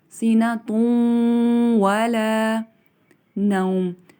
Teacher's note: تأخذہ سنۃ ولا، اب یہاں دیکھیں تا کے اوپر تنوین ہے اور اس کے بعد واو مشدد ہے، تو یہ ادغام ہوگا، تنوین کے نون کی آواز اور واو کی آواز مکس ہو جائے گی · نوم میں واو سے پہلے زبر ہے، حروف لین ہے، اس کو نرمی سے ادا کیا جائے گا